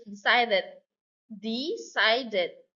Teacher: Decided. Stress on the second syllable.